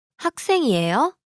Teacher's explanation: here the question is formed by the rising intonation